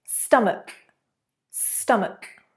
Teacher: 81, like ache, stomach, stomach. You've got a k rather than a ch sound.